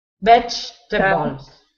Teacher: there's an E in the middle of the word, but you don't pronounce it. So it should be veg.